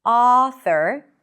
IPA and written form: ˈɑ.θəɹ (author)